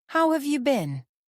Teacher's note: Capturing the intonation which usually falls slightly at the end